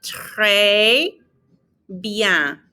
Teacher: We're not pronouncing the N on bien either.